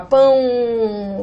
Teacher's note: quando eu falo pão, esse U desempenha o papel de semivogal. Porque o som é de U